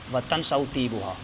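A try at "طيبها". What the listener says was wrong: طیبہا یا طیبہا دونوں طرح پڑھ سکتے ہیں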